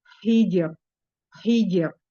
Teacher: hi disempurnakan karena mempunyai sifat hambas dan rokhah, mengalir suara, mengalir udara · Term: huruf H